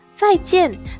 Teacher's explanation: these two Chinese characters both also fourth tone. So please read in the medium high pitch.